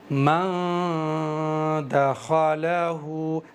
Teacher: नाक से अदा करेंगे इसका मखरज बन जाएगा नाक का बासा यहां से अदा होगा और जबान को हवा में रखेंगे। आप भी मेरे साथ में कहो मन दखलहु जबान को मैंने हवा में रखा है। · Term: इफा